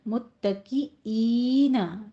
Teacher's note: खींच के पढ़ना है, और आइन नहीं बनाना, आइन नहीं कहना है, ईन हमजा की साउंड आनी चाहिए